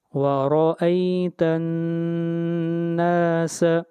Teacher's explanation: نون کے اوپر شد ہے اس لیے آواز ناک میں جائے گی، غنہ ہوگا